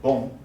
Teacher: in boom the voice is traveling both through the nose and the mouth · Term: nasal vowels